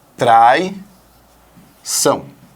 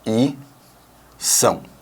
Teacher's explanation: você vai abrir um ditongo e transformá-lo no hiato